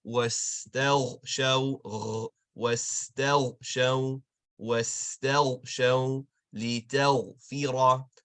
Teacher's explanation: And if we take a look at the word or the words wastel show, it's not in wastel show as like a kha with a scratch. Rather, ghain is gonna have a gargle, like we're gargling some water in the morning · The ghain is always going to have that nice deep gargle.